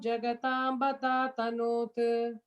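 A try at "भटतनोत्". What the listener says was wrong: Tanot, you just should be able to end it with it. Anavastham Jagatam Bhatatanot. Yeah, you don't have to stress on it.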